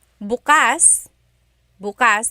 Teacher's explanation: the emphasis is on the second syllable that means open.